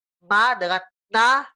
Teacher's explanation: Ma dengan na itu tidak bisa karena dia melibatkan hidung. Ya. Maka dari itu ini disebut juga sebagai huruf gunnah.